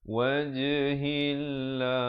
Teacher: perkataan Allah datang sebelumnya baris kasrah, iaitu baris bawah, kena baca nipis. Wajhillah, jangan baca wajhillah, itu tebal, salah ya.